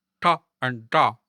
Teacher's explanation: it's a retroflex, which means you pronounce it by curling the tip of your tongue backward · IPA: [ʈ] and [ɖ]